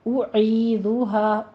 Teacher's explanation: آگے مد منفصل جائز کریں گے، 4 کاؤنٹ کرنا ہے، اعیذھا، او حمزہ کی ساؤنڈ ہے، ہونٹوں کو گول کر کیجئے، ضمہ ہے ، آگے عی ہے، عین وسط حلق سے ادا ہوگا، اعیذھا